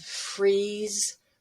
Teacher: the long e which is really high up and you can almost feel vibration because your tongue is so close to the roof of your mouth far in the front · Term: the green vowel